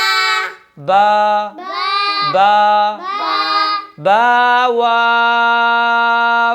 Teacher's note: با آخر میں حمزہ بھی نہ آئے اور یا ہا کے بعد بھی پیدا نہ ہو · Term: الف مدہ